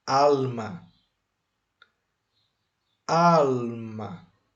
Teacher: Al é a sílaba tônica. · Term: palavra grave